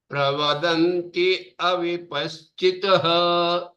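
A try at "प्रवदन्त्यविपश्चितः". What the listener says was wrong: Oh, you don't stop there. Pravadanti avipaschitaha.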